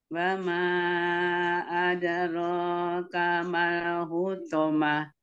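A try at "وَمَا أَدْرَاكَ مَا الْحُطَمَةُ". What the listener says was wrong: bacanya bagus, tinggal huruf ro-nya coba. Ada roka, ro-nya tebal. Ada roka. Ada roka lagi. Kalau dal sukun nggak boleh ada. Ada roka, bunyinya de. De, ada roka.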